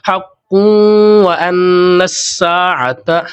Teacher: حق واو زبر وا، حمزہ نون زبر ان، نون سین زبر نس، سین الف زبر سا، عین زبر ع، تا زبر تا، حق وان الساعة، حق قوں کی آواز ہم نکالیں گے اور قاف کو ہم موٹا کریں گے